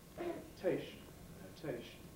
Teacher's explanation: note into its own symbol the t is now silver initial so we get strong aspiration